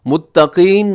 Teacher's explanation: متقین میں قاف موٹا رکھیے گا، اکثر زیر کی صورت میں حرف ہم باریک کر دیتے ہیں تو یہ قاف ان حرفوں میں شامل ہے جو ہمیشہ موٹے پڑھے جاتے ہیں، کبھی بھی باریک نہیں ہوتے